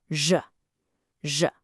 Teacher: For the Mandarin zh, your tongue shouldn't be anywhere near your teeth. It's all happening further back. You curl the very tip of your tongue up and back, and then you make the sound, zh, zh.